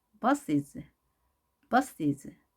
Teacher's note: 그래서 이를 넣어주고 뒤에 오는 s는 z로 발음합니다